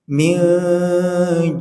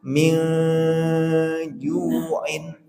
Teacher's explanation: nun sukunnya itu menjadi suara yang samar disertai persiapan huruf yang kedua. Huruf keduanya di sini jim, berarti suara samarnya di tengah. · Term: ikhfa